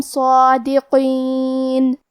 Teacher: قاف کو ہم موٹی آواز میں پڑھیں گے. آخری میں نون پہ رکیں گے تو اس پہ جزم سے رکیں گے لہذا ہمیں نون کو ظاہر کرنا ہے